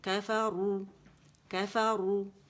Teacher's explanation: را موٹی ہے اور واو مدہ ہے تو اس میں تقریر واضح ہونی چاہیے